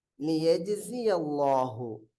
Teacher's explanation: அல்லாஹுடைய லாமுக்கு முன்னால ஃபத்ஹா வரனால அல்லாஹுடைய லாம வல்லினமாக வாசிக்க வேண்டும்